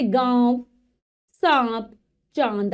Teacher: इसका उच्चारण नाक एवं मुंह दोनों से होता है। नाक से भी वायु निकलेगी और मुख से भी निकलेगी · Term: अनुनासिक